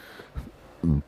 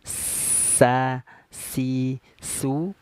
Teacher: huruf Sin ya sa si su ini keluarnya dari ujung lidah ujung torfun ya tadi kita sudah jelaskan lidah itu dibagi empat